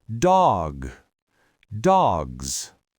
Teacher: because that final G and Z are voiced, the vowel in the middle of the word has to stretch. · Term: voiced Z sound